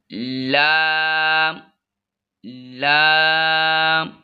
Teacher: आठवां मखरज है ज़ुबान के अगले हिस्से का किनारा ऊपर के 8 दांतों के साथ लगाकर लाम अदा होता है।